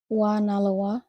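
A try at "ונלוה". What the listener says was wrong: Wa Nalawa. Perfect.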